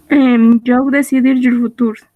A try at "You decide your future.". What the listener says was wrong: no yo. You. ¿Ves lo que te estoy escribiendo ahí? Literalmente pronuncias eso. You.